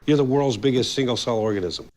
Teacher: the intonation remains pretty steady and quite flat with a slight pitchf at the end of organism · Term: flat intonation